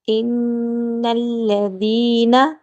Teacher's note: ذال کو نرمی سے پڑھیں گے اور تھوڑا سا لمبا کریں گے۔